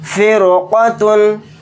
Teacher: اس قاف کے ہونے کی وجہ سے اس رائے ساکنہ کو موٹا یعنی پر پڑھیں گے۔ فرقتن، میم را زیر میرو، صاد الف زبر صا، میرو صا، دال دو زبر دن، میرو صادن۔